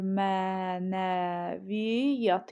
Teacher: Mənəviyyat sözü necə tələffüz olunur? Mə, ə uzanır, mənəviyyat, y da düşür.